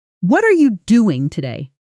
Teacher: A native speaker will usually stress what and doing almost singing them slightly louder while are you and today flatten out quietly around them. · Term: sentence stress, Sentence stress